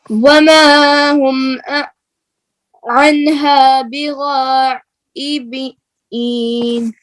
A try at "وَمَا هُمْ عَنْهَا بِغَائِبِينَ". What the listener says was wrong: मद पूरी कीजिए, फिर पढ़िए। फिर पढ़िए, मद पूरी कीजिए, मद में लहजा भी लगाइए। वमा हुम अन्हा बिगाइबीन, आइन की नून में कलकला नहीं करें। वमा हुम अन्हा बिगाइबीन,